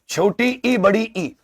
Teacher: छोटी इ बड़ी ई इनका उच्चारण तालु से होता है।